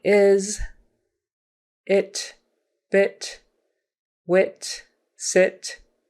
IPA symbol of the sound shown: ɪ